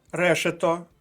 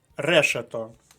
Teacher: решето наголос на перший склад